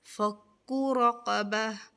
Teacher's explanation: فَكُّ اس والے کاف کو, یہ باریک کاف ہے, اس کو اس کے مخرج سے ادا کرتے ہوئے باریک ہوگا, اور یہ قاف جو ہے اس کو پر کریں گے.